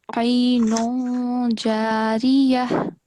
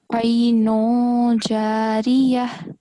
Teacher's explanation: when you join this word with the next one, you have to conceal the sound of the tanween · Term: dhamma tanween